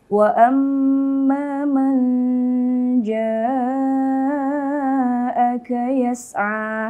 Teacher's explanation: Nah, di sini wa amma man nun mati bertemu dengan huruf jim. Nah, jim ini salah satu huruf ikhfa yang mana bacanya ini harus samar